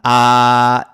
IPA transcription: ä